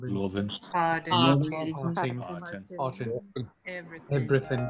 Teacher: The ing endings, ing, shortened to in.